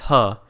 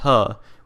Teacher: The sixth consonant is ha. I repeat, ha, which is aspirated by default.